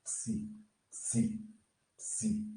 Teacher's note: esse P aqui, gente, ele é bem sutil. Psi, psi. Ele quase não é pronunciado